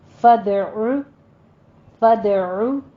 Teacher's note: کا قاعدہ۔ آگے فدعو میں دال کے اوپر قلقلہ کرنا ہے، عین کو وسط حلق سے ادا کرتے ہوئے دونوں ہونٹوں کو گول کیجیے